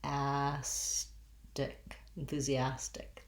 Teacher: then we get to our stressed syllable with our ah black cat vowel